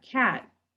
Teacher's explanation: it's not quite such a hard k sound it's more of a little bit softer lighter contact light touch